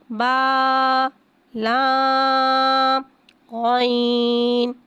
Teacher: عین حرف مستعلیہ ہے لہذا اس کی آواز حلق سے موٹی ادا ہوئے گی۔